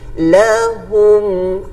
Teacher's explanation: maka mim tu mesti dibaca dengan jelas, tanpa dengung, tanpa idgham. Okey, lahum tidak ada dengung pada mim.